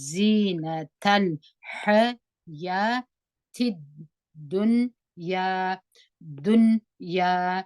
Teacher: دغه لام شمسی په دال کې مدغم سوی دی ګټ سوی دی د دال په اواز وایو